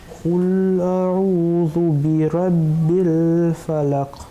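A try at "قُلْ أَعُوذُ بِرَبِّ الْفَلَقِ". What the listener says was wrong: Il faut qu'on arrive à entendre le qaf.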